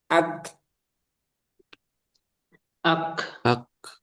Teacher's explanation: Jadi suaranya tertahan dulu. Ak, nah, ketika dilepas baru muncul hamasnya